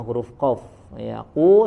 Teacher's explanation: Di sini ada huruf qaf, ya, huruf qaf dibaca makhrajnya dari aqsal lisan, ya, dari lidah bagian yang paling jauh, ya, huruf qaf. Ya, qu sempurnakan dhammahnya, dhammus syafatain, monyongkan kedua bibirnya dan dibaca dengan tebal. Ya, naikkan pangkal lidahnya, dia punya sifat isti'la, ya.